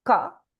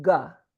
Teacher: Ka, mechanical, unvoiced. Ga, voiced, muscular, massaging in.